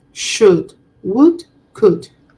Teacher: I do not pronounce the L sound